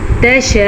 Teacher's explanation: یہ جو مد آپ کو نظر آ رہی ہے تقریباً اس کی مقدار 5 حرکات عربیہ ہے۔ اگر آپ کو اس بات کی سمجھ نہ آئے تو 5 سیکنڈ تک آپ نے اس والی مد کو لمبا کرنا ہے، یہ لمبی مد ہے۔